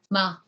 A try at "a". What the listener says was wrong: A, higher.